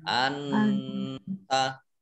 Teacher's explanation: nun sukun bertemu dengan huruf ta, bacaan ikhfa dibaca samar-samar.